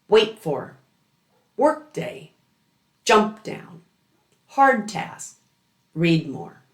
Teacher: the first word ends in a stop and the air releases on the beginning of the second word